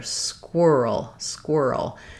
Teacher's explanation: So first of all, we have first syllable stress, and the letters Q-U say the qu sound.